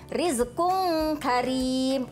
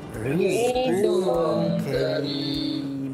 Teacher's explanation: ra tarqiq ni dia disebut secara nipis sahaja